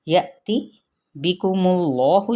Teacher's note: حمزہ پہ جھٹکا دیا جائے گا، حمزہ ساکنہ ہے